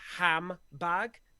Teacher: you say the ham the lips come together and you get that bilabial bag